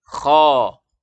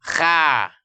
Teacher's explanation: Jadi huruf kho orang Arab membaca dengan mengangkat pangkal lidah sehingga suara tertarik ke atas, lalu mulut dibuka, infitah. Buka mulut, pangkal lidahnya terangkat, suara membumbung ke langit-langit sehingga bunyinya menjadi kho. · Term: isti'la